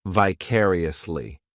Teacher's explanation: This adverb has five syllables and the stress is on that second syllable,